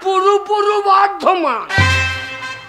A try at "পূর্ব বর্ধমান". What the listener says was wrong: বাবা পুরো বর্ধমান নয় বলো পূর্ব বর্ধমান।